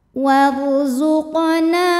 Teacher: cara membacanya Nun dipanjangkan dua harakat saja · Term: Mad Thobi'i